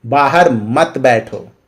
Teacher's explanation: तो मत में हम लोग ज्यादा प्रेशर देंगे